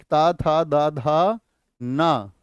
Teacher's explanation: फिर होता है आपका दंत, जो दांतों से बोले जाते हैं